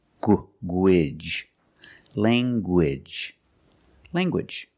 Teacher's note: You have the nasal sound, lang, and the hard g.